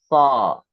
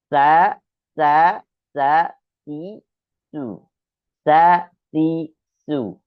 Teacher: Makanya ketika membaca sin, tarik sedikit lebih ditarik gerahamnya supaya kecil desis huruf sin yang keluar.